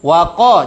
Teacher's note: Huruf wau tipis. Jangan sampai huruf wau yang tipis karena berdekatan dengan qof ikut tebal.